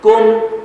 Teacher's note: کم اظہار کریں گے گنہ نہیں کریں گے